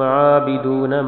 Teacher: عابدون عین کو لمبا کرنا ہے، عین پہ کھڑی زبر ہے